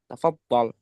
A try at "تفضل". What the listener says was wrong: Kok aneh gitu tafadhalnya. Kayak tok dengarnya ya. Tafadhol jadi.